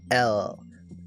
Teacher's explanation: L, the tongue pushes against the teeth.